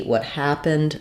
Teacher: happened is the stressed word and the stress syllable of happened is the first syllable · So I've written that in capital letters here in uppercase so that you can see what happened, that the ha is going to be long, have the clear vowel, and the rest will be very reduced and have reduced vowels.